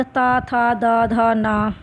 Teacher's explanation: ता वर्ग का स्थान हमारा उच्चारण स्थान दंत होता है।